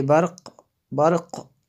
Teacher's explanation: قاف کی آواز آئی ہے کیونکہ یہاں پہ قلقلہ ہوتا ہے، قاف حروف قلقلہ میں سے ہے تو یہاں پہ یہ ساکن ہوا تو اس کا قلقلہ ظاہر ہوا جی۔